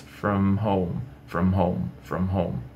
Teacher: os lábios têm que romanticamente se tocarem para você produzir o som dessas duas palavras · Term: som bilabial